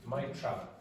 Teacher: Okay, so what happens is maybe a clock will stop here or that the T is elongated, so you don't get might travel. When you have two T's together, one of them disappears.